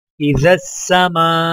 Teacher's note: الف کے اوپر مد ہے تو لہٰذا مد کو 5 الف کے برابر کھینچ کر پڑھا جائے گا